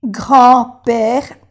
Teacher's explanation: no se pronuncia la D